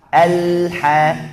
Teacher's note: Kita harus mengalir karena bersifat bainiyah atau tawassut. Kemudian jangan tarik lidah, bukan alla, tapi al. Kita tahan lidahnya di makhraj lam.